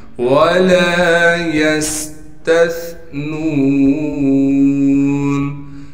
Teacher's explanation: تا کو ثا سے ملانا ہے اس لیے کہ ثا ساکن ہے اور ثا کو نرم کر کے باریک کر کے پڑھنا ہے، نون کو واو سے ملائیں گے اس لیے کہ واو ساکن ہے اور نون کو ایک الف کی مقدار کھینچیں گے اس لیے کہ نون کے بعد حروف مدہ میں سے واو آ گیا۔